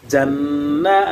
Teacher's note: হরকতের ভাবে নুনে তাসদীদ এসেছে, ওয়াজিব গুন্না হবে এবং নুনের উপরে খারা জবর আসার কারণে এক আলিফ টান হবে মাদ্দে তবাই।